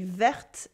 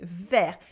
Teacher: Vert in French means green with a silent T. We don't say verte in the masculine form, we say vert.